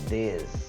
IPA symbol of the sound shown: ð